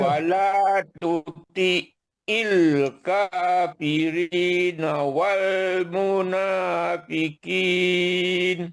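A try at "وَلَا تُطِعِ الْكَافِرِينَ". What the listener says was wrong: Kena hilangkan yang lemah lembut pada banyak tu. Kaf, na tu. Wala. Kena tegas.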